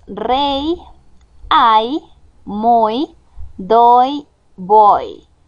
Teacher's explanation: el sonido es exactamente como el de la I vocal y se utiliza como si fuera una vocal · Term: la Y como vocal